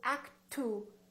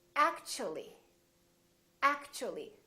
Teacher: So when the T is followed by a U, for example, in the word actually, we don't say actu, we don't say actually. The T becomes kind of a CH sound.